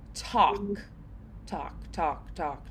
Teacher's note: in order to sound a little bit more casual, we can do a little more dentalized T. So like a halfway between.